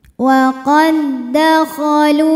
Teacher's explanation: sebab ada waw sukun didahului harokat dhammah, maka lam panjang 2 harokat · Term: matobi'i dhahiri